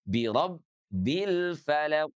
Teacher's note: huruf ba sekali lagi bukan sifat rakhawah. Jadi tidak boleh mengalir sepenuhnya. Tidak birabbil falaq.